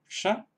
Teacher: Luego tenemos la sibilante retrofleja